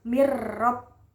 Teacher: Mirrob bihim itu mirrob itu bacaan idgham bila guna karena nun sukun bertemu dengan huruf ro, jadi dibacanya langsung masuk ke huruf ro dengan jelas. Mirrob, nunnya nggak dibaca.